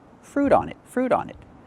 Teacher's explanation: The T in fruit changes to a fast D because it's between vowels.